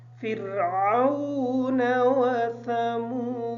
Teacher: फ़िरऔन की जो रा है इस रा को बारीक पढ़ेंगे इस वजह से कि रा साकिन है और रा का माक़बल है वो ज़ेर है फ़िरऔन व समूद